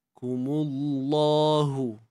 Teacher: kalimah Allah ni kita kena tebalkan dia sebab sebelumnya baris depan kan kat sini.